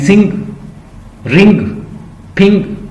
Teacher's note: तो आपको ऐसा लगेगा जैसे मेरे नाक से हवा, जैसे आवाज निकल रही है कोई। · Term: इंग साउंड